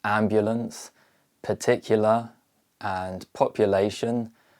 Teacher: in modern pronunciation, the I and U sounds are increasingly replaced with the schwa sound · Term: weak vowel merger